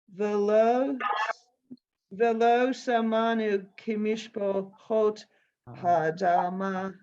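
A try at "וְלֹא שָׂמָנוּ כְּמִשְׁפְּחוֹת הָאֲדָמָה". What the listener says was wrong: Good. Good.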